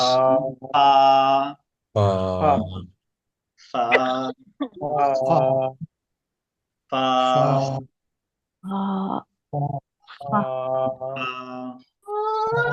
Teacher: নিচের টুটের পেট উপরের 2 দাঁত, নিচের টুটের পেট উপরের 2 দাঁত, ফা, বাতাস, ফা ফা فا ফা فا ফা।